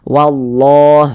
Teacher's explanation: tebalkan lafaz Allahnya karena sebelumnya ada harakat fathah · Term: dibaca tebal